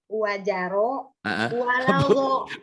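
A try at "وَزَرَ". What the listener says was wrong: Bu, orang Sunda mah wajaro. Itu zainya tuh Bu rapuh. Ini Bu, dangukeun. Wazaro zaitun. Wazaro rapuh.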